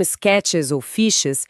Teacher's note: Palavras terminadas em sons de x ou x, como sketches ou fiches, exigem que a mandíbula crie um espaço extra, aquele sonzinho vibrante de z no final